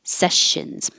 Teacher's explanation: these S's are a sh sound. Sessions. If it sounds like sections, you're stopping the airflow somewhere, and it might be the back of your tongue coming up and blocking maybe a K, or maybe you're making a T, like sections in the front.